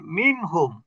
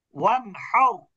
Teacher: এই 6টি অক্ষরের কোনো একটি অক্ষর যদি নুন সাকিন অথবা তানবিনের পরে আসে, তাহলে ওই নুন, সেটা নুন সাকিন হোক অথবা তানবিনের মধ্যে নুন হোক, কোনো জায়গাতেই গুণনা হবে না, বরং নুনটাকে স্পষ্ট করে পড়তে হবে। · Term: ইজহার